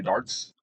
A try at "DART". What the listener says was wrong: Okay, so darts, or dart, there's no S on the end.